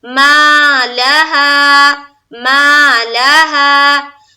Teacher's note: ما میں الف مدہ، لام کو زبر کے ساتھ جلد، اور ہا میں پھر الف مدہ